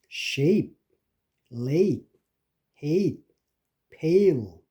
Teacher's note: 첫째로 모음 A. 이거는 front, mid, tense. 그러니까 앞에서 입 앞에서 나는 소리로 혀를 중간쯤 내리고 tense, 경직된 음입니다. 그래서 이게 경직되게 이게 세게 해야 됩니다.